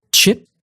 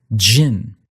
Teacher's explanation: for both of these you can also add a t or a D sound giving you CH as in chip and J as in Jin